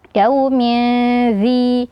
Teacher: Ada tanwin juga yang bertemu dengan huruf dalal setelahnya Nah di sini hukumnya adalah ikhfa juga jadi tanwinnya disamarkan